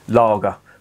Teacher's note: you have words like, for example, lager, which they elongate the A, and that comes from the Saxon